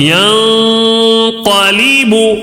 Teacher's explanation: تھوڑا سا غنہ کر کے ناک میں آواز کو گھما کر پڑھیں گے. اس طرح ینقلب، اس کو بولتے ہیں غنہ، ینقلب، سمجھ رہے؟